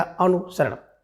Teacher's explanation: अनुसरण में देखिए जो सा आपका दिया है बिल्कुल संयम वाला सा है, जिसे आप बड़ा सा कहते हैं, जिसे आप मूर्धन्य सा कहते हैं। तो मूर्धन्य सा ना होकर के बल्कि दंत सा होना चाहिए। ठीक है ना, छोटा सा सर्प वाला सा।